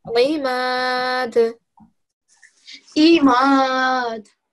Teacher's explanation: this is an ayn, okay? Okay. And it comes from the bottom of your throat.